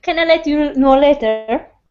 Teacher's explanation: Later it's got to go up at the end. It's a question.